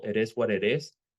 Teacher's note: the T becomes a soft R in Spanish